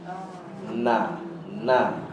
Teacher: Nun adalah huruf yang keluar betul-betul pada tip-tip. Ni lidah kita ada hujung dia yang betul-betul hujung.